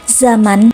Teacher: huruf Z seperti pada umumnya berciri hidup, oral, apikoalveolar, dan frikatif